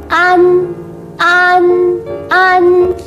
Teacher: 发音的时候先发啊的音，然后舌尖顶住上牙齿背部，让气流从鼻腔出来。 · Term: 前鼻韵母